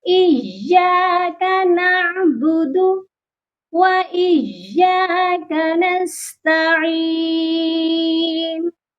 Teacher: اس آیت میں جو مسٹیکس کرتے ہیں وہ ہے ایاک نعبد و ایاک نستعین، یا کو نرمی سے پڑھ رہے ہوتے ہیں، یہ غلطی بالکل بھی نہیں کرنی۔ ایاک، یا مشدد ہے اسی لیے یا پر سختی کرنی ہے۔